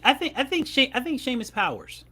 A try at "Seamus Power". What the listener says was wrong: He was no S. It's Power. Power.